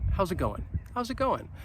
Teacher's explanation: notice that how is is contracted to house and going you you're not really going to hear that g at the end it's going to get dropped